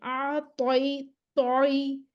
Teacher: अब बताइए आप इसके तौ जो है, तौ हमारे पास जो है ना, हुर्फ़ मुस्तअलिया, ये सबसे मुफ़ख़म लेटर जो तौ, ज़ुबान का पिछला हिस्सा इसका ऊपर उठ जाना है। और तौ में हमारे पास जहर भी है, शिद्दत भी है, इस्तिअला भी है, इतबाक भी है, इस्मात भी है, क़लक़ला भी है। सब कुछ ही तौ में इकट्ठा हुआ।